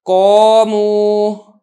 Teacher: اب یہ دیکھیں قاف، یہ تو حروف مستعلیہ میں سے ہے، ہم نے اس کو موٹا کرنا ہی ہے، لیکن جو الف ہے یہ چونکہ حروف مستعلیہ کے بعد آ رہا ہے، لہذا الف بھی موٹا کر کے پڑھا جا رہا ہے